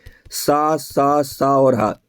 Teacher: ऊष्मीय व्यंजन सा सा सा और ह ये भी हमारे महाप्राण होते हैं